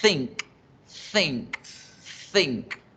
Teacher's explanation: Se llama interdental porque yo ubico la punta de mi lengua entre los dientes.